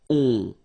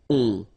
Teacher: so it's a nasal and it goes in your nose and it goes like on. Alright, so you don't hear any N, so it's really on.